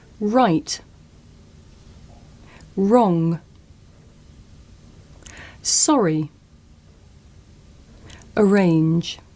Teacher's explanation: My lips come out and I pull my tongue back.